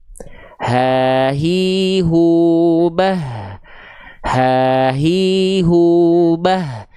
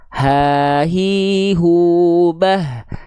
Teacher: Ha besar itu dilafazkan dari tenggorokan kita yang paling pangkal di sini. Nafasnya karakternya biasa. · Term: H besar